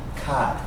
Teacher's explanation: he does not pronounce the R, because that is typical British English.